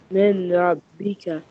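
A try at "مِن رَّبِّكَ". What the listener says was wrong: I am listening noon. Don't read noon. There is no noon here because of shadda.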